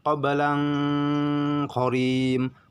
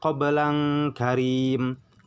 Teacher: maka pembacanya harus sangat didengungkan, harus jauh dengungnya gitu. Samarnya harus jauh samarnya.